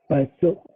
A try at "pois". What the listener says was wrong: Pois. OI is wa, so we say pois. Pois, pue, pui, po, pu. Pois, pois, wa, pois.